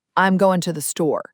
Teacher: So, a phrase like I'm going to the store sounds more like I'm going to the store. That little t sound is so weak and quick, it's really easy to miss if you're listening for a full clear two. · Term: weak forms